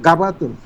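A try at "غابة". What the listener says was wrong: ওটা গা না বলে গ বলুন, গ গ।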